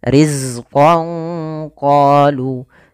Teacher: Pada lafal riz ini sempurnakan daripada sifat zai, yaitu salah satu sifatnya adalah sifat jaharnya, tertahannya nafas tapi mengalirnya suara, yaitu sifat rokhawahnya.